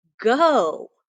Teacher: no t no consonant closing in the vowel so my vowel is free to run away my vowel is free to say its name forever it's open so my vowel sound is going to be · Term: open syllable